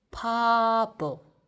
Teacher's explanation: Originally starts with ba, but we read this pa.